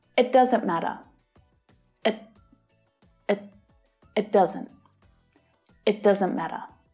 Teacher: So instead of it, I, the vowel sound relaxes and it becomes the schwa sound, uh. And when spoken quickly, the T is often not fully pronounced either. The air is not released after the sound. So instead of t, t, the air is caught and then you move quickly to the next sound.